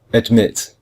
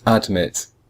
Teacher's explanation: But we hear mit much more. Mit is stronger than ad. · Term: second syllable is stressed